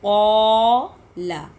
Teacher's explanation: یہ الف کی تخفیم مطلب الف موٹا کیونکہ اس سے ماقبل والے الفاظ حروف مستعلیہ میں سے یعنی کہ موٹے حروفوں میں سے.